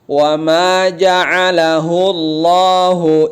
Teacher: Huruf tebal tafkhim lihat dia lafaz Allah juga lidah belakangnya terangkat